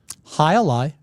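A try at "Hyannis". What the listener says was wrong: High a lie is not. It's high lie. It's not high a lie. High lie. You don't pronounce the A. You don't. It's not high a lie. It's high lie.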